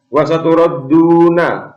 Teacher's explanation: Huruf ra dibaca tafkhim atau tebal.